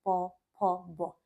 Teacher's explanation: आपके दोनों होठ आपस में मिल रहे हैं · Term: प वर्ग